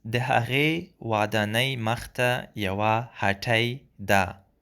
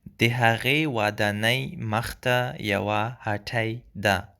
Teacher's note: Be careful about the t sound in hatay. It's a retroflex t sound.